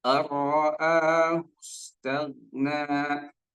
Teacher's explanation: Gha sukun itu bukan qalqalah, maka jangan dipantulkan, jangan dibaca tagna lah.